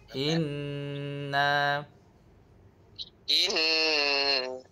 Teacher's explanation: Nun dia ada tanda syaddah. Jadi seperti biasa kena dengung dua harakat.